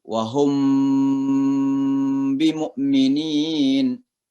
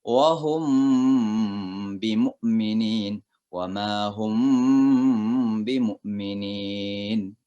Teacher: Jadi apabila ada mim mati ketemu dengan ba, maka itu dibaca dengan samar-samar di bibir. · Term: ikhfa syafawi